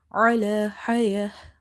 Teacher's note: Ain is from the middle of the throat.